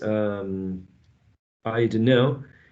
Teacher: It's not a fully vowel sound, as in the diphthong, but we're using a schwa. · There's an elision as well. The t is not present there.